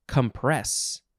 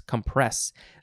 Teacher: We are emphasizing the second syllable.